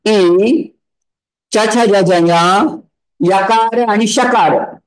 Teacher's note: तालू स्थान कोणाचं आहे इचुयशानाम तालू म्हणजे काय ई च छ ज ज यकार आणि शकार यांचं उच्चारण स्थान आहे तालू म्हणून त्यांना म्हणायचं तालव्य वर्ण